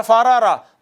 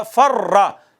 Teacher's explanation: 2 را آئی ہیں دونوں متحرک ہیں مگر پھر بھی اس کو ضم کر دیا، ادغام کر دیا، اور ہم نے کہا فرا۔ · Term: ادغام جائز